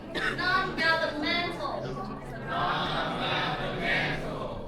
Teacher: And please put the stress on the fourth syllable.